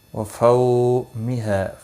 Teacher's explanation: فو واولین ہے، تھوڑا نرمی کے ساتھ کھینچ کر ادا کریں گے۔ ہا الف مدہ ہے، ایک الف کے برابر کھینچ کر پڑھیں گے۔